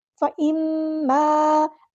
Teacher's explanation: میم پہ غنہ زمانی ہو رہا ہے تو ایک الف کے برابر ہم یہاں پر رکیں گے ، فَإِمَّا، الف مد آ گیا تو مد اصلی کریں گے،